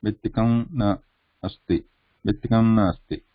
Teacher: But if you are saying quickly, bhittikam asti, bhittikam na asti, between these two, very little gap, bhittikam na asti, bhittikam na asti. So that ma is not completely pronounced, it changes to anuswara sound. That is why we are writing it as anuswara.